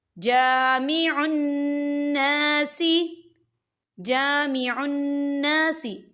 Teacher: یہاں نون مشدد ہے، یہاں پر غنہ بھی ہوگا اور یہاں پر الف مدہ بھی ہو رہا ہے، خالی الف سے پہلے زبر ہے تو ہم اسے دو حرکت کی برابر کھینچے پڑھیں گے۔